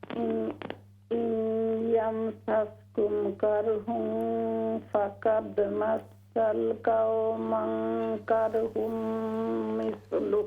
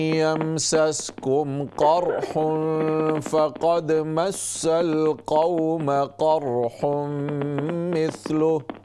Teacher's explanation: یہ سارے قاف جو ہیں نا موٹے قاف ہیں فل ماؤتھ سے